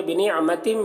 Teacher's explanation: بنعمتم، یہاں پر تنوین کے بعد میم ہے حروف یومن میں سے تو ادغام ناقص ہوگا، اسے غنہ کے ساتھ پڑھتے ہیں